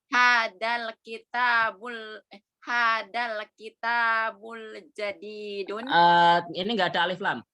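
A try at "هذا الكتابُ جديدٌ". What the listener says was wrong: Ini enggak ada alif lam. Berarti hadal kitabu.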